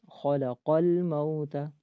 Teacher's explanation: تو صحیح پڑھنے کا طریقہ، خلق الموت، خلق الموت۔ آگے لام کے اوپر جزم ہے تو قاف کو لام کے ساتھ ملائیں گے